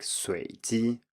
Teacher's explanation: both students failed to rise on the first tone and said something like 随 机, which sounds more like a low tone. So I simply noted that this is correct, except for the tone on the first syllable.